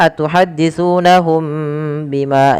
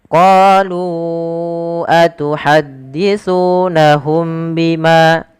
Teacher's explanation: Ikhfa syafawi terjadi apabila ada mim mati bertemu dengan huruf ba. maka suara mimnya wajib ditahan.